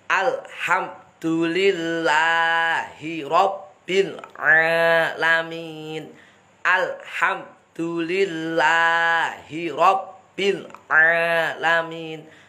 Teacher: Ini diawali dengan hamzah, harus jelas mangapnya a.